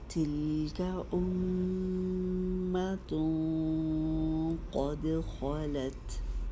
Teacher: تلک امۃ قد خلت، اور امتوں یہاں اخفا جو آ رہا ہے قاف کے مخرج کے قریب کریں گے تو قاف چونکہ موٹا حرف ہے تو اس لیے اخفا کی آواز بھی موٹی ہی ہوگی، لیکن قاف کے ساتھ جو آگے دال آیا ہے اس کو باریک ادا کریں گے